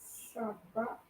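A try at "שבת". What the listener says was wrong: It's going to be Shabbath. So it should end in a th, right? Shabbath. So Sabbath is Shabbath.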